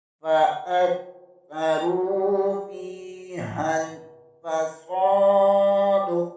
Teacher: را پیش کے آگے واو مدہ ہے، اسے ایک الف کے برابر کھینچ کر پڑھیں گے · ہا زبر کو لام کے ساتھ ملائیں گے، سین زبر کے آگے الف مدہ ہے، اسے بھی ایک الف کے برابر کھینچ کر پڑھیں گے، دال کے اوپر زبر ہے، وقت کی صورت میں دال ساکن کر دیں گے، یہاں پر بھی قلقلہ ہوگا۔